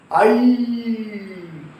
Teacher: ஐ கடைசில ஓசை எப்படி முடியுது ஈ ன்னு முடியுது இல்லையா அப்ப இந்த ஐ என்ற நெடில் எழுத்துக்கு அதனுடைய இணை எழுத்தாக ஈ பிறக்கிறது